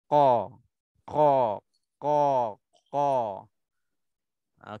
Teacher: kalau bila sebut qa kita terasa macam bahagian belakang tu terangkat naik terangkat naik